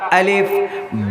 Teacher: الف کا مخرج جوف دہن یعنی منہ کا خالی حصہ، الف ایسے نکلتا، الف۔